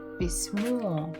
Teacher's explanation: The stress is on the final syllable.